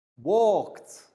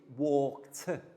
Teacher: the ED letters producing the final T sound